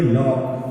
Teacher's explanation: आ की मात्रा भी नहीं मान सकते हम, है ना। तो ये ओ और आ दोनों के बीच की स्थिति में